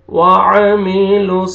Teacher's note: वाव पे होंठ को गोल करेंगे, लिप्स को राउंड में लेके जाएंगे अच्छी तरह ताकि वाव अदा हो